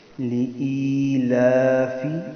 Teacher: لِإِيلَافِ اکثر غلطی کرتے ہیں ہم یہاں پر لِإِيلَافِ پڑھ دیتے ہیں. بیچ میں یا ہے، تھوڑا سا اس کو لمبا کریں گے تب یا بیچ میں آئے گی، ورنہ یا کٹ جائے گی